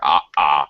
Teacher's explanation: you do what's called a glottal stop you basically block your throat